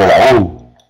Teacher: si la fuerza de voz cae en la U, allí va a ocurrir el famoso hiato